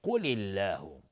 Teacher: قل الله قاف از حروف استعلاء غلیظ تلفظ میشه. لفظ جلاله ترقیق هست، نازک تلفظ میشه چون قبلش کسره اومده